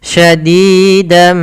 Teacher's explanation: suara nunnya hilang, merubah menjadi suara mim sambil kita tahan. Hukum bacaannya idgham bi gunnah.